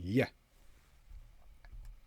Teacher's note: there's no blocking of air at any point. There's just a narrowing of air and then an opening. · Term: Y sound